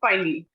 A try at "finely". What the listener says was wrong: So that finally is not FINALLY. It is FINELY.